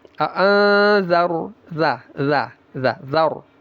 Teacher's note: Ra-nya tebal, dha-nya tetap tipis.